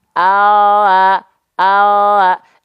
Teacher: yang nempel cuman bagian ujung lidah saja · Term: huruf L